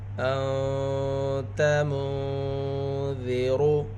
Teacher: یہاں پر نون ساکن کے بعد حروف اخفا میں سے ذال۔ را کو پر پڑھیں گے کیونکہ را کے اوپر پیش ہے۔